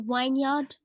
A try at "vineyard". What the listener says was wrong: Yeah, it's not wine.